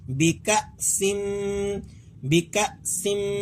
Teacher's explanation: اسی لیے یہاں کھچاؤ نہیں کیا جائے گا. یہاں آپ نے کاف کو لمبا نہیں کرنا بلکہ اسے حمزہ کے ساتھ جھٹکا دے کر پڑھنا ہے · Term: حمزہ ساکن